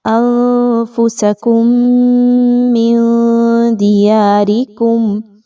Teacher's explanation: اچھا، اس سے پیچھے میم ساکن کے بعد میم کا حرف آ رہا ہے، انفسکم من دیارکم، یہاں پہ میم کے بعد میم ساکن کے بعد میم کا حرف کا دوبارہ آ جانا نشاندہی کر رہا ہے کہ آپ نے میم پر غنہ کرنا ہے۔ ایک میم کو دوسرے میم کی آواز میں ملاتے ہوئے غنہ کیجیے اچھے سے